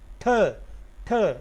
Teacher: The tip of the tongue is going to touch the upper part of the teeth, and that is the lower passage of the above teeths. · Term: एल्वियोलर